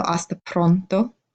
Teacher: roll your R's or make them have like a nice, a harder sound than we do in English. So hasta pronto instead of hasta pronto.